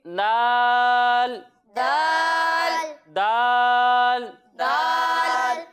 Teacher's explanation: ضاد کی جب ہم ادائیگی کریں گے تو آپ کو یہ معلوم ہے کہ ضاد حروف مستعلیہ میں سے ہے تو اسے ہم موٹا کر کر پڑھیں گے، اور دال حروف مستعلیہ میں سے نہیں ہے تو اسے ہم باریک پڑھیں گے